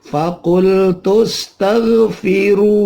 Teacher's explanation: Dibaca mad tabi'i, panjangnya 2 ketuk, 2 harokat.